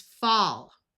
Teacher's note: ALL at the end of a root word has a broad A sound of ah, so this is fall.